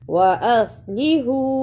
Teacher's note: ادا کرنے کا طریقہ من بعد وَأَصْلِحُ، اسے وَأَصْلِحُ نہیں پڑھنا، صاد کی جگہ پہ سین کی آواز نہیں آنی چاہیے